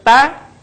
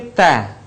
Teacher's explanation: ada udara yang mengalir ketika kita melafalkan huruf tersebut